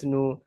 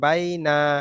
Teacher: হরফে মাদ্দা টান হবে, লিন টান হবে না